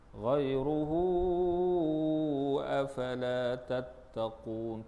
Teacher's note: Mak silah yang panjang. Panjangnya 4 atau 5 harakat juga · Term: mak silah tawilah